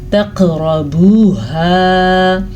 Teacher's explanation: قاف پہ قلقلہ ہو رہا ہے اور را کو ہم پر پڑھیں گے